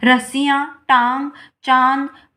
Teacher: मुंह से भी हवा निकल रही है और नाक से भी इसकी ध्वनि निकल रही है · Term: अनुनासिक